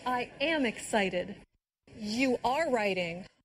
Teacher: the stress on the verb be when said am and are